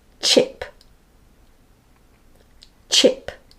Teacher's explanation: it's a stronger force of air than Shh so say this word chip chip sometimes people don't say this · it's a plosive sound short plosive sound so there's like a stop-and-go so it's a stronger force of air than Shh